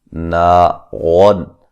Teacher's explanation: نون کو ایک الف کی مقدار کے برابر لمبا کریں گے، یہ الف مدہ ہے۔